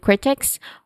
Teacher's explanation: critics, where the stress syllable is on the first syllable, crit, which has the short e sound, and then x, which has a short e sound also, and it ends with a hissing sound.